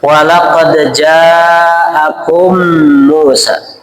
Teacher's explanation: Kalau ada mim ketemu mim, maka dibacanya harus dengung. Namanya itu idgham mimi mutamasilen.